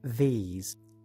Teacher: this sound is produced in the same way you make the unvoiced th as in thanks only this time your vocal chords vibrate in other words you voice it like this these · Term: voiced consonant